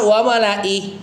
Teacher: kalau diwakafkan wamalai tetap ya pendek nah ref kalau diwakafkan biasanya karena kita kebiasaan Kalau di ujung-ujung itu kita panjangin ya, seolah-olah semua ayat di Quran itu adalah mad sukun ya.